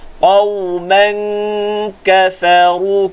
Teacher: Tutup makhraj kaf. Tunggu di makhraj kaf, panjangkan dengung kat situ. Qauman kafaru, ka nipis, fa nipis. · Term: ikhfa hakiki